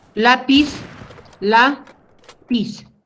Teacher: la fuerza de voz está en la penúltima sílaba y como termina en consonante Z, entonces yo le pongo el acento. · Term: palabra grave o llana